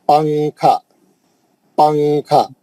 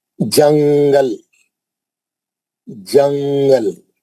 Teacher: नून की आवाज को नाक में स्विच कर देंगे और उसको छुपाएंगे। छुपा के गुना करेंगे।